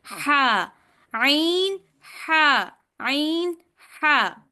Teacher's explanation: तीसरा मखरज वस्ताउल हलक है, यानी हलक का दरमियानी हिस्सा। यहां से दो हरूफ आइन और हा निकलते हैं।